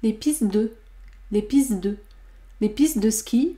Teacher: vous n'entendez pas la consonne T à la fin du mot piste, puisqu'une assimilation se produit entre le T de piste et le D de deux.